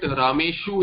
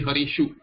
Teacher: So there is some rule in some places like it will not be Harisu, it will be Harishu. This Dantya Sakara will become Murdhanya.